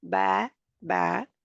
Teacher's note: इसके अदा करने में जुबान का कोई अमल दखल नहीं होता जुबान बिल्कुल नहीं होती रिलैक्स होती है जरा भी नहीं हिलती और बा के बा हरफे शफ विया